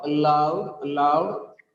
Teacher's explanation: It is a disyllabic word, loud, loud. As per the rules of word stress, in the word aloud, the second syllable is stressed.